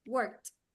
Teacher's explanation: In this word, the ed sounds like a t